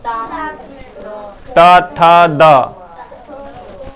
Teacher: यानी कि जीभ हमारा कहां सटा? दांत में।